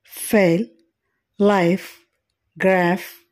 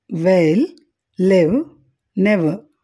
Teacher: వీటిని పలికేటప్పుడు పై పండ్లు క్రింది పెదవిని నొక్కుతాయి